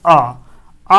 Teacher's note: केवल और केवल आ एक ऐसा स्वर है जो हमारा केवल और केवल किस भाग से बोला जाता है, मध्य जीभ से। ऐसे हम मध्य स्वर भी कहते हैं।